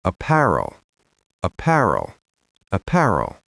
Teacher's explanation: Stress on the second syllable, pair.